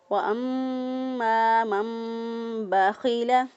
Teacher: خوا جو ہے اس کو ادنیٰ حلق سے ادا کیا، گلے کا وہ حصہ جو کہ منہ کی طرف ہوتا ہے وہاں سے خوا ادا کیا